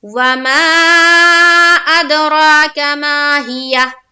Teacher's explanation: وما میں تو مد کریں گے 3 سے 4 الف کے باقدر کھینچنا ہے اور اد میں قلقلہ کریں گے. قلقلہ کا بیان آگے آئے گا اور را کو پر کرتے ہوئے ایک الف کے باقدر کھینچنا ہے. · را کو پر کرتے ہوئے ایک الف کے باقدر کھینچنا ہے. کاف کو جلد ادا کرنا ہے. · را کھڑا زبر را کاف زبر کا اد راک میم الف زبر ما ہا زیر ہی یا ہا زبر یہ ماہیہ. وما میں تو مد کریں گے 3 سے 4 الف کے باقدر کھینچنا ہے اور اد میں قلقلہ کریں گے.